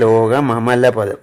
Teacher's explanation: ലോകം അമലപദം ആകുമ്പോൾ അവിടെ ആ അനുസ്വാരം അനുനാസികമായിട്ട് മാറും